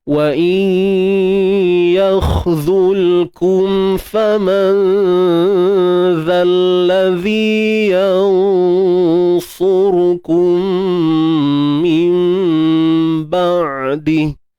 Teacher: point dia idgham naqis, masuk tidak sempurna, dan pastikan kekal bunyi hidung tu lah. Bunyi dengung.